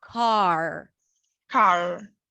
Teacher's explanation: When the R appears at the end of words, we don't round the lips so much.